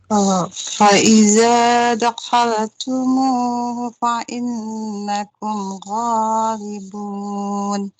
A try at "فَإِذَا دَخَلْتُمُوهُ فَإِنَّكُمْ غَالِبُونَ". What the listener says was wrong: Masalahnya temponya, Ibu harus seimbang. Temponya diseimbangkan. Baik, sambil saya perbaikin, nun bertasydidnya, Ibu coba ditahan lagi.